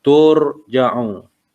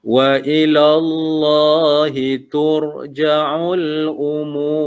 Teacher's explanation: Dia bukan tur. Ra tu kena ditebalkan.